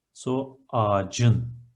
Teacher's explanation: The last consonant is ç, it's an explosive one, it needs to alternate itself to the relative, the softer one, c, so ağacın.